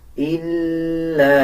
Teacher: اس لام کو اس لام کے ساتھ ملا کے پڑھا جائے گا. لام کے اوپر شد ہے، مضبوطی کے ساتھ لام کو ادا کیا جائے گا.